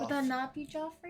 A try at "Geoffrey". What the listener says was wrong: No, Joffrey is Jof, like Joffrey from Joffrey Baratheon. It's Jeffrey, but it's spelled Geoffrey, but it's pronounced Jeff. Or Jeffrey. He goes by Jeffrey. Jeffrey.